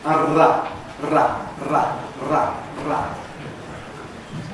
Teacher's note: An ‘alveolar trill’ is [(a)r(a)], [r]